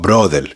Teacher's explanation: he's changing the R for an L